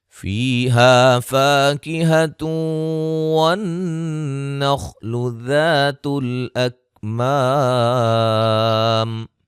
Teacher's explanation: نون تنوین کا ادغام مع الغنہ، نون مشدد پہ غنہ، خا کو موٹا ادا کریں گے، الف مدہ ہے، ما الف مدہ ہے۔